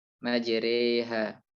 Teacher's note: Ada satu ro khusus yang dia hanya satu kondisi dalam Al-Quran, yang itu juga masuk dalam ro tipis, yaitu ro yang dibaca imalah atau antara fathah dan kasroh